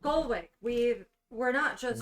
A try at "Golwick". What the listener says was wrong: Golwick. There's an extra O in there. Go.